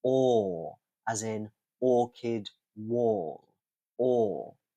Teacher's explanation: I would say with your mouth is a little bit open, your lips are a little bit stretched further, and the schwa is really extremely relaxed. Then our other open mid back vowel. This time it's rounded and it's also long.